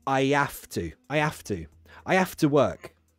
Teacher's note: when i say i have to i drop the h